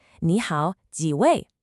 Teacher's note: Notice that little rise in the tone on 位? That's what makes it a question.